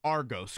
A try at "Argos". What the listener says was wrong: Say it like a local, Argus. Even though it's you said it how it is, spelled, Argus, got to Hoosierize it.